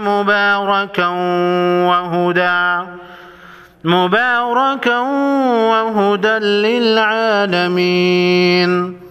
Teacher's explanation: مبارکا و با کے اوپر کڑا زبر ہے، ایک الف کے مقدار یعنی 1 سیکنڈ لمبا کریں گے، اور تنوین کے بعد واو ہے، ادغام مع غنہ ہوگا